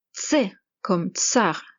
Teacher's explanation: c'est un changement rapide de T et S